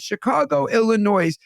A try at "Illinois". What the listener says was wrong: One, don't pronounce the S in Illinois. Just going to say that to you.